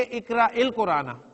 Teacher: لکھنے میں یا لکھی جائے گی لیکن پڑھنے میں وہ یا نہیں آ رہی